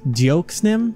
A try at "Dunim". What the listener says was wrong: The X is silent. It's a French thing.